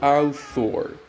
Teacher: the sound is produced placing your tongue between your top and bottom teeth and push the air out. This sound is voiceless and you don't produce it using your throat. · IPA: θ